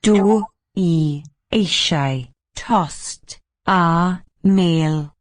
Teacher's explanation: the T in tost, the first one, sounds like a T, voiceless and aspirated rather than a D sound